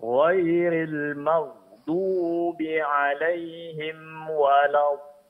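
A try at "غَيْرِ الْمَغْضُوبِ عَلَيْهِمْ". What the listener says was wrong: huruf ghain sukun di sini suara jangan terputus dan jangan terlalu ditekan ya Pak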